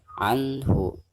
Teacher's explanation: Maka cara membaca nun sukun di sini itu harus dizahirkan ya, atau dijelaskan suara nun sukunnya. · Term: izhar